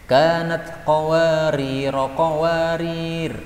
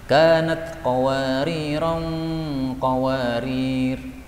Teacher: boleh juga dibaca tanwin ketika bersambung